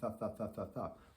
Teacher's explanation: When I say thuh, the tip of my tongue right here is hitting my teeth